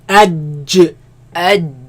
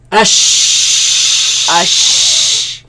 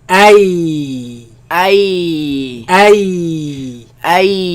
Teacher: they come from the middle of the tongue against the middle of the upper palate